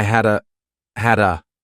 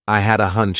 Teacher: so I combine had a together as one word